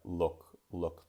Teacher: I thought that the U sound could be a little bit more open. What I mean by that is to have less roundness of the lips · in the American English version you're going to hear that the vowel is a lot more relaxed